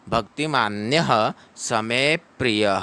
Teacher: य के बाद में विसर्ग है, इसको ह पढ़ना है, ह को फास्ट पढ़ना है कि श्लोक के मध्य में आया है। भक्तिमान्यः समे प्रियः, समे प्रियः, स में प और र मिलके प्री बनता है, तो यहाँ पर में पर बल दिया जाता है।